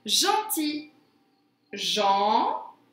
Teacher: Jean, je n'entends pas I. Si, j'entends I à la rime sur la deuxième syllabe.